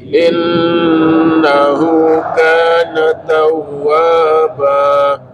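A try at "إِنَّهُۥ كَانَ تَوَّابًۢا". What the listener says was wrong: Kana cukup 2, bukan kana tawwaba, bukan kana tawwaba, cukup 2.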